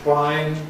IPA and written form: hwaɪn (whine)